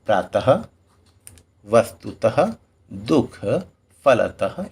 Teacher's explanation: विसर्ग का उच्चारण ह की तरह होता है।